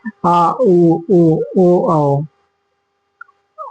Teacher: जिन स्वरों का उच्चारण जीभ के पिछले भाग से होता है वह पश्च स्वर कहलाता है